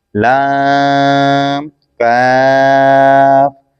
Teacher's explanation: लाम जबान का किनारा दांतों की जड़ की तालु की जानिब से अदा होता है और काफ जबान की जड़ तालु के सख्त हिस्से से अदा होता है।